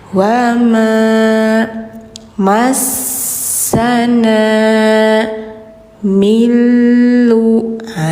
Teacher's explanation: Ini jangan min tapi mil langsung ke l idgham bila gunah